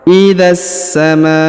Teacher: huruf ma ya dipanjangkan lima harakat karena di atasnya terdapat tanda bacaan panjang lima harakat